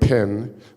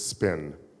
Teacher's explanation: the P's are different there is an explosion of air